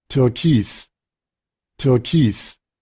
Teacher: Y encontramos ese sonido de esa I redonda. Türkis, Türkis, Suena casi como una especie de V, ¿eh?